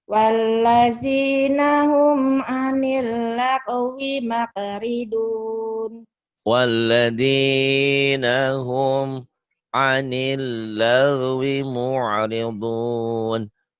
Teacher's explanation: G-nya kayak keselak. Kalau emang di tenggorokan adanya.